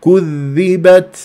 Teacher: لا الصح كذبت والذال شديده عفوا يعني مشدده فاجيب الذبذبه كذبت والتاء ساكنه مهموسه في الوقف والوصل